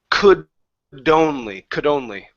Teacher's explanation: take that D connected to only